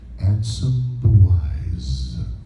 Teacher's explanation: I'm actually not doing an extra syllable. What's happening is I'm pronouncing all the way through, and I'm holding my Z's longer